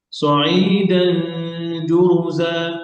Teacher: وإنا لجاعلون ما عليها صعيدا جرزا সাইদান দান, এটা হচ্ছে জিম, জিম লাইট পাতলা হরফ, গুণাটাও পাতলা হবে।